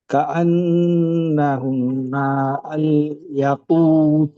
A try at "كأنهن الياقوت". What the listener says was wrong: ইয়াকুত, টানগুলো মিস হচ্ছে কেন?